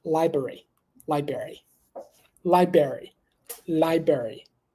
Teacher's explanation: again no need to pronounce the very first R